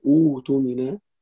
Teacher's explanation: همزة but if you join you pronounce the second همزة but if you start from it you pronounce the first همزة and the second همزة becomes a letter of مد فهذا كل هذا مد بدل وأيضا so مد البدل مد البدل